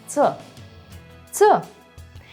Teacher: And ц can't be soft in Russian. So such endings will be always pronounced as ца.